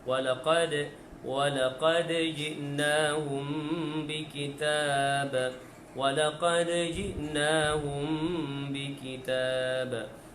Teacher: Baik, kita perhatikan pada ayat yang ke-52, Allahumma salli ala sayyidina Muhammad, di awal kalimah yang pertama walaqad. Ya, dan yang sukun dalam kalimah walaqad adalah qalqalah sughra, berdetak kecil